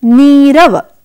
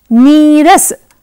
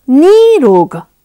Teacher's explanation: विसर्ग का लोप हो जाएगा और नि में जो छोटी ई है वो बड़ी ई होकर दीर्घ रूप में आकर शब्द बनेगा नीरव।